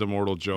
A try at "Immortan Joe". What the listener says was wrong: It's Immortan Joe. Immortan, yeah, not immortal.